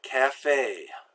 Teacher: next form of the letter E is a and so that's it sounds like the letter A except you pull your lips back more it's a pure sound there's no diphthong going up and down in it